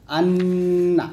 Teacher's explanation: নুনটা জিহ্বাটা উপরে তালুর সঙ্গে লাগিয়ে গুণনা করবেন